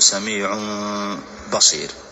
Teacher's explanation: من أحكام الميم الساكنة الإخفاء الشفوي، وسمي إخفاء شفويا لأنه يظهر على الشفتين، فنقول سميع، فما نقول سميع نطبق الشفتين، وإنما نجعل فتحة يسيرة عند إخراج الميم مع الباء